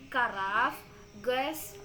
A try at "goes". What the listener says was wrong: Kok bisa nyebutnya gogos gitu? Goes.